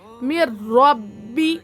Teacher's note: نون ساکن کے بعد حرف یرملون میں سے را آ رہا، اسی لیے بغیر غنہ کے ملا کر پڑھیں گے. اس کو ادغام بلا غنہ بھی کہا جاتا ہے، ادغام تام بھی کہیں گے. · را با زبر رب میں تسدید ہے اور را مشددہ ہے. را مشددہ سے پہلے زیر ہے تو را مشددہ کو باریک پڑھیں گے